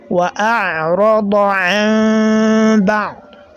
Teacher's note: So the nasalization that we have here is known as al-iqlab, right? So the noon has been replaced with mim.